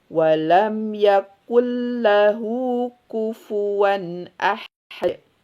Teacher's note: Maka leburkan langsung ke huruf lamnya. Ya, nunnya dihilangkan. Walam yakul lahu kufuwan ahad. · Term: Izgom bila gun